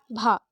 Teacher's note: भा को बोलने पर सर्वाधिक बल होठों पर पड़ रहा है। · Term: महाप्राण ओष्ठ